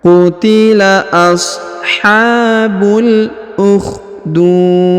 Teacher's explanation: du terdapat wau sukun atau wau mati sebelum huruf pemberhentian dan huruf pemberhentiannya disukunkan atau dimatikan ya huruf di sehingga dibaca pantul atau diqolqolahkan